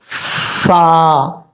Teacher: یہ فا کا مخرج آپ کو میں نے بتایا ہے، اوپر والے جو دو دانت ہیں ان کا کنارہ نیچے والے ہونٹ کی تری والی جگہ پہ لگے گا تو فا پڑھا جائے گا